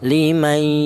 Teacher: Adapun panjangnya dengung yaitu dua harokat atau dua ketukan · di situ ada suara berdengung, itu namanya gunnah ya